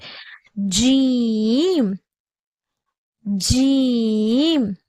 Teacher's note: ஜீமுடைய பிறப்பிடம் நாவின் நடுப்பகுதி மேல்முரசை தொடும்பொழுது பிறக்கப்படுகிறது. அதாவது நம்மளுடைய நாக்குடைய நடுப்பகுதி இருக்கு இல்லையா, அது நம்மளோட மேல்முரசை தொடும்போதுதான் ஜீமுடைய சப்தம் பிறக்கப்படுகிறது.